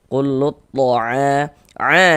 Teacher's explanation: Jadi cara membacanya itu dari lu ini langsung masuk ke huruf syamsiyah, ke huruf dha ini. Jadi huruf lamnya ini kan nggak ada tanda bacanya nih. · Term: idgham syamsiyah